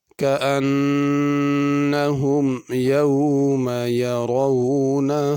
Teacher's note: كأن کے نون پہ غنہ ہے